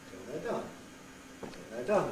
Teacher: High fall. Low pre-head, high fall.